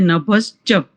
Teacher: વિસર્ગનો તાલવ્ય શકાર થઈ જશે